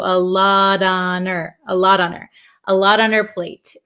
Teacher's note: the H in her kind of disappeared also